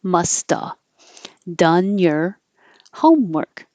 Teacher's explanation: So must have with a V, you don't have to say the V. You can just say must have done your homework.